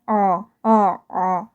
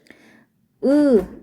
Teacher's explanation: 이 아레아의 소리는 아도 아니고 어도 아닌 중간 정도의 소리예요. 혀가 오그라들고 깊게 나는 소리 아 정도 생각을 하시면 돼요.